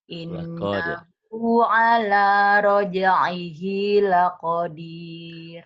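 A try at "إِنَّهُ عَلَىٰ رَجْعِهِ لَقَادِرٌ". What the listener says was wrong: laqadir panjang atuh.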